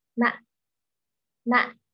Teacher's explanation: It's full, then it's cut off abruptly. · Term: low, broken